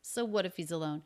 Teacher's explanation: the Z links right into the beginning sound of the next word the schwa